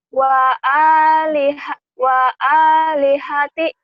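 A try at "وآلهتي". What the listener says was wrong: Panjang atuh.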